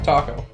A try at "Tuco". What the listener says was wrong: Not Taco, that's a U.